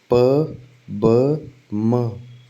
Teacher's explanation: जैसे ये तीन होते हैं बलेबियल साउंड। जैसे प ब म आप बोलेंगे तो आपको पता लग जाएगा भाई यहां आपके दोनों होठ बंद हो रहे हैं